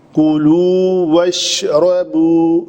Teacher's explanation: کولو کاف کے اوپر پیش ہے، واو لام کے اوپر بھی پیش ہے، اس کے بعد واو ہے، پھر واو ہے تو شفتین پورے گول رہیں گے